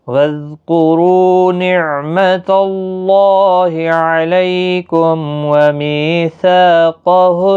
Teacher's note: قاف حروف مستعلیہ کا حرف ہے، موٹا بھی پڑھنا ہے